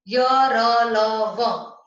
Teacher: इनके उच्चारण में जो जीभ है मुख के किसी विशेष भाग के निकट तो आती है किंतु उसे स्पर्श नहीं करती, इस कारण उच्चारण में हवा कम टकराती है। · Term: अंतस्थ व्यंजन